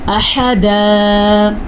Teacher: ہا جو ہے اس کو حلق سے نکالنا ہے اور اس طریقے سے اس کو نکالنا ہے کہ خا نہیں کہنا اس کو، نہ ہی ہا کہنا ہے۔